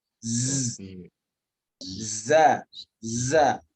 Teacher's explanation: Tapi dalam ilmu tajwid, zai ini mesti dipanjangkan sedikit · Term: sifat sofir